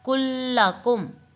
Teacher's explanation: ہم پہلے لام کو دوسرے لام میں ہم داخل کر دیں، کلکم. ٹھیک ہو گیا، یہ 2 حروف ایک جیسے داخل ہو گئے. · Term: ادغام مثلین